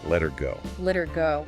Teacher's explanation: The h sound at the beginning of her is very commonly dropped when it's unstressed. It just vanishes.